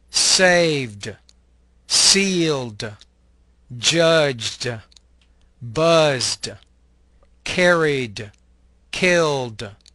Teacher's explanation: The ED ending is pronounced as a D sound without creating an additional syllable.